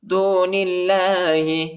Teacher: اللہ کے نام کو باریک پڑھیں گے، نرم پڑھیں گے